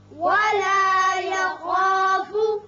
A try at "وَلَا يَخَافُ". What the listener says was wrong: خا چونکہ پر پڑا جاتا ہے حروف مستعلیہ میں سے ہے، اس کی وجہ سے الف پر ہوگا. ولا یخاف نہیں پڑھنا بلکہ ولا یخا خا کر کے ولا یخاف